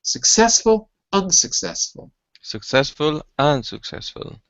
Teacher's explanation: In the second word, the stress is in the first syllable. It's on the first syllable, right.